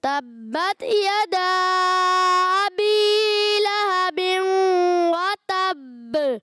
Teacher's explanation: با کو پکڑنا ہے، تشدید والا ہے، مشدد ہے، پکڑ کے اور پھر تھوڑا رک کر پھر چھوڑنا ہے، کیونکہ مشدد قلقلہ جو ہے فوراً ادا نہیں ہوتا.